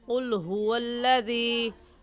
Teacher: क़ाफ़ का मखरज है कि ज़बान का आखिरी हिस्सा जो कव्वे के पास है, हमारे हलक में जो लटकी हुई खाल है उसे कव्वा कहते हैं।